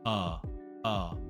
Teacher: Schwah sound is made with a completely neutral, relaxed tongue, jaw, and lips.